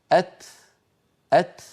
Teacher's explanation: وعندما ينطق التاء يتبعها بنفس وسط، لا هو نفس شديد كبير ولا هو أيضا بتر